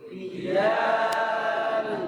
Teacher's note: jangan sampai dia tafkhim, menebalkan jim, terkhususnya apabila jim datang sebelum alif